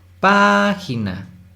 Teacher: Pa es la sílaba tónica, que sería última, penúltima, antepenúltima. La antepenúltima sílaba es la tónica, eso significa que es una palabra esdrújula y se debe acentuar, entonces acentuamos página.